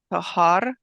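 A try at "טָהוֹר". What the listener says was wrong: Tahor instead of tahar. Both are actual words, but here it's tahor.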